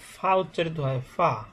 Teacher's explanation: ঠোঁটের পেট অর্থাৎ নিচের ঠোঁটের পেট সামনের উপরের 2 দাঁতের আগার সঙ্গে লাগাইয়া ফা , অর্থাৎ ঠোঁট, আমাদের যে ঠোঁটটা আছে নিচের ঠোঁটের নিচে যে